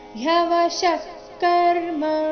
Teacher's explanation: ಶ ಆದ ನಂತರ ಇರೋ ವಿಸರ್ಗದ ಉಚ್ಚಾರಣೆ ಅರ್ಧ ಖ ರೀತಿ ಬರಬೇಕು